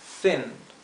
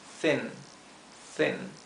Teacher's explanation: es una I corta y más cerrada más apagada